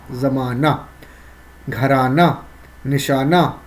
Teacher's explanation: گھرانہ، نشانہ، یہ سب الف کا تلفظ ہے، مکمل طور پہ ہا کی تلفظ ادا نہیں ہو رہی، اسی لیے ہم اس کو ہائے مختفی کہیں گے.